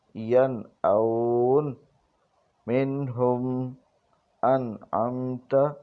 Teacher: ان تینوں میں غنہ نہیں کیا گیا بلکہ اظہار کیا گیا